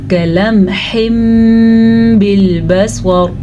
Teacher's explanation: نون ساکن یا نون تنوین کے بعد جب حرف با آ جائے تو اس صورت میں نون ساکن یا نون تنوین میم میں بدل جاتے ہیں. نون ختم، نون تنوین ختم، میم آ گیا. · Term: اقلاب کا قاعدہ